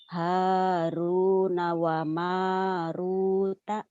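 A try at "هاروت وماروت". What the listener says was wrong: Haruta bukan Haruna. Haruta wa Maruta. Haruta wa Maruta.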